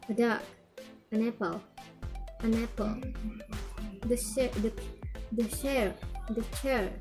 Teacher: Do not stress an and the.